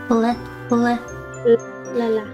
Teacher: So your tongue touches the tip, like the very top part of your upper teeth. So that's the English L sound, which is kind of really hard for us Japanese people to do.